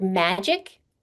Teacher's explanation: Magic, the stress is in the first syllable.